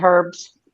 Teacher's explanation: You guys do not pronounce the letter H.